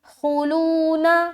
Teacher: خوا پیش خو موٹا کر کے ادا کریں گے. خو لون, لو میں واو مدہ اور نون کو جلد ادا کریں گے.